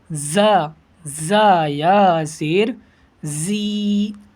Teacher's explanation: ایسے پڑھے گی کہ زبان چھنچنا جائے، زا یا زیر زی، زبان کے آگے والے حصے میں جھنجھناہٹ پیدا ہوگی